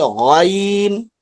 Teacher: غین گین نہیں ہو، حلق سے نکالیے